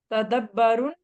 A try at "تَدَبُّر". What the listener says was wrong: تدبر پیش آ گئی نا، یہاں پہ زیر آ گئی، یہاں پہ